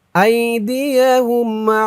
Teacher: ইফা গুন্নাটা নাকের ভিতর থেকে আসবে